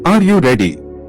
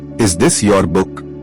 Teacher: Yes, no question. Voice goes up.